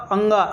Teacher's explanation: तो नाक और मुंह दोनों से निकलता है